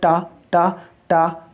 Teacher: टा का जब उच्चारण करते हो तो जीभ कहाँ पर लगती है? ऊपरी ऊपरी छत का पिछले भाग में लगती है ना, टा टा टा, है ना। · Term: मूर्धन्य व्यंजन